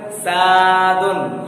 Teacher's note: बस मुंह को बंगाली की तरह करना, सादुन, बस स्वादुन नहीं बोलना है, वाव नहीं लाना है, सीन वाव नहीं, बल्कि सीन ही को मुंह गोल करके बंगाली की तरह बोलना है